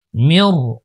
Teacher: এখানে দেখতে পাচ্ছেন মাঝখানে একটা নুন সাকিন রয়েছে, নুন সাকিনটা কিন্তু উচ্চারণে আসে নাই, নুন সাকিনটা রর সাথে ইদগাম হয়ে গেছে